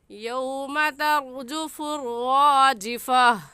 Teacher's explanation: गोल ता पर जब वक़फ़ करते हैं तो वो हा बन जाती है